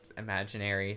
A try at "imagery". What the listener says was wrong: Imagery. There's no N.